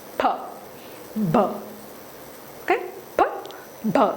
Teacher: take the root word PL plaus that sudden burst that means when we release Air the air comes like a sudden burst